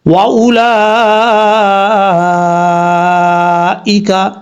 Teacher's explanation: واؤ زبر وا، حمزہ پیش او، لام کھڑا زبر لا، حمزہ زیر ای، وَأُولَئِ، کاف زبر کا، یہاں پر مد متصل ہے، تین الف کے برابر لمبا کریں گے۔ وَأُولَئِکَ، اس طریقے سے پڑھا جائے گا۔